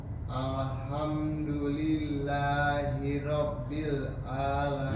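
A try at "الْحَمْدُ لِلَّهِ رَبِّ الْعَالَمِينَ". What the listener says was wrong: Lebih tipis huruf Ra. Hirabbil.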